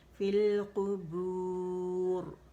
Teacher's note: قاف موٹا ہوگا، اسے باریک نہیں کریں گے